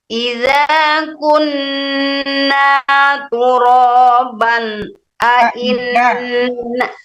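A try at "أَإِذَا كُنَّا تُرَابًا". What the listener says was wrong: Kalau ngulang di tengah itu dari aizanya bukan iza aja. Aiza,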